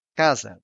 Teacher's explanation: kazen which means house the stress syllable is in C so the first a is open and the other one is shut